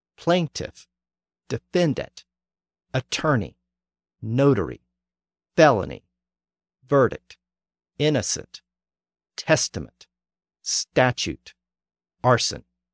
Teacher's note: the stress has shifted forward to either the first or the middle syllable